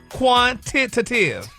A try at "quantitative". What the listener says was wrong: It says Tay, T-A-Y. You're saying titty.